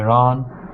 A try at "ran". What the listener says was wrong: All right, let's go to the word ran here. So instead of ran, okay, with an all sound, it's ah. It's a short a. When I ran the newspaper. Yeah, that's the short a sound. Ran.